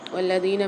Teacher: لام پر مشدد ہے تو یہاں پر واو کے ساتھ ملا کر پڑھیں گے، سختی اور جماؤ کے ساتھ بھی پڑھیں گے لام کو۔ زال کے ساتھ یا مد آ رہی ہے تو اس کو بھی ایک الف مدار کھینچ کے پڑھیں گے۔